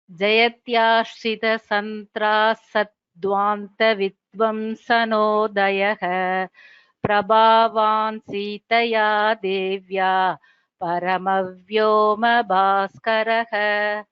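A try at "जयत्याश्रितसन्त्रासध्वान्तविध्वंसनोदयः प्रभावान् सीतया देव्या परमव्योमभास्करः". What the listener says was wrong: Yes, the Mahaprana should be clear.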